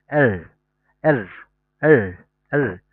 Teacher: আর এর উচ্চারণটা হবে এর। শেষের রটা যখন বলবেন তখন একটা ভাইব্রেট হবে